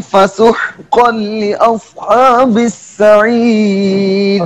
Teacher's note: ادغام تام، تنوین کا ادغام لام اور را میں بغیر غنہ کے، یعنی بغیر غنہ کے تام ہوتا ہے.